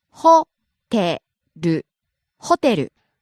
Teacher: Starts high, drops on the second syllable, te, stays low.